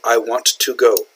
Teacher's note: Notice I pronounce then both T's. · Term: clear enunciation